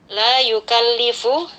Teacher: La yukallifu, ada la di sini kita baca panjang 2 harkat, hukumnya mad asli atau mad tabi'i